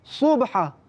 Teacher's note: sad dibaca tafkhim, tebal, dan ha dibaca tengah halkum. Ha tadi kita jelaskan iaitu tengah halkum, sad dibaca dengan tafkhim iaitu tebal.